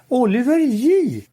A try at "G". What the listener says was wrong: It's not Yi, it's J, like J, like in genius or gem or J.